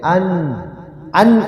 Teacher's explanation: Ihar itu disempurnakan bunyi nun sukun. Nun matinya disempurnakan dibaca dengan jelas tapi langsung masuk ke huruf selanjutnya. Dibaca jelas nun sukunnya tapi tidak ditahan. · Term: izhar